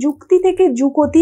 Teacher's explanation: যুক্ত ব্যঞ্জনটা ভেঙে যাচ্ছে, কয়ের সঙ্গে একটা অ চলে আসছে, তাই এটা হয়ে যাচ্ছে স্বরভক্তির উদাহরণ।